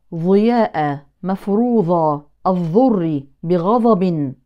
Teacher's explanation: يبرز طرف اللسان ويضعه مع اطراف الثنايا العليا محل مخرج الظاء فتخرج الضاد ظاء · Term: ابدال الضاد ظاء